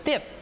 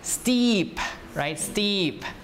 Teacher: this is long e so you have to extend your time of pronouncing not just step but steep right steep so you pronounce it